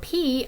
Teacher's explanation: You can also add the voiced or voiceless quality to those. So for P, I could say this is a voiceless bilabial stop